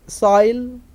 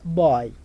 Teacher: the tongue starts from the point R and molds towards e the lips are rounded in the beginning